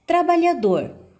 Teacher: Quando você pronuncia a palavra trabalhador, você pode observar que a última sílaba também você pronunciou com maior intensidade. Desta forma, ela é classificada como uma oxítona, última sílaba tônica.